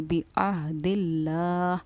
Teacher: यहाँ पर देखिए लफ्ज़ अल्लाह के लाम से पहले क्योंकि ज़ेर आ रहा है तो लफ्ज़ अल्लाह के लाम को हम बारीक पढ़ेंगे।